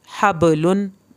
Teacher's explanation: ح زبر با حب، لام دو پیش لن، حب لن۔ با کو آپ نے ہلا کے پڑھنا ہے کیونکہ حروف قلقلہ آ گیا